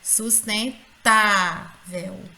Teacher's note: ela é uma palavra paroxítona porque a penúltima sílaba dela é a sílaba mais forte